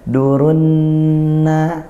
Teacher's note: Dan karena ini lamnya juga lam ta'rif, sehingga dibaca idgham syamsiyah seperti itu. Nunnya bertasydid jadinya, sehingga dibaca gunnah, dengung ya. Dengung tadi juga makhrajnya dari hidung.